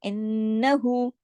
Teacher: नून पे तशदीद है, गुन्ना हुआ।